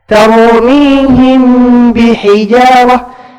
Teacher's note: Jadi mim di sini disembunyikan. Engkau langsung berubah ke makhraj ba. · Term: ikhfa syafawi